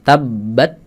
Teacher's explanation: Suaranya putus habis itu anginnya keluar sedikit tabbat putus kemudian ah keluarkan ah dan hati-hati antara putusnya suara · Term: hams